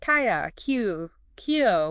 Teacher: a consonant plus the Y sound squeezed in before the vowel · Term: yoan sounds